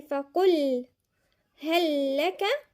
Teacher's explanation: هنا في ادغام وفي شدة، يبقى كامل بغير غنة